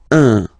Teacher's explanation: Of course, after that you will master it without any problem and without any doubt, but you've got to pronounce it like un. So it's what we call the nasal, so it goes in your nose, okay? So if you listen to me, you don't hear any N, okay?